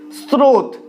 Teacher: স্রোত দন্তস্ব দন্তস্বয়ের মতোই উচ্চারিত হচ্ছে।